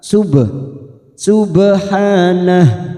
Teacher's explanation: ba sukun namanya Qalqalah sugroh Karena Mati asli di tengah kalimat jangan lupa huruf ba ini kita pantulkan